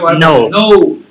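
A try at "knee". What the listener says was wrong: একটু দীর্ঘ ইকার থাকলে একটু লম্বা হবে, নি, এক্সকিউজ মি, নি, এই যে ডাবল ই আছে, নি, একটু লম্বা করবেন,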